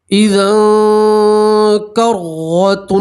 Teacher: را کے اوپر زبر ہے، را کو موٹا پڑھیں گے